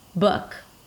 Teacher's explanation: the lips round just a bit, if at all. Some people don't even round the lips for this sound.